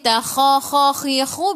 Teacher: biar ada angin dan menggelegak. Kha 2 harakat ada alif, mad asli.